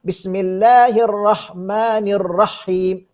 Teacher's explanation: Biasanya orang salah pada bacaan rahim kerana dia sukunkan ha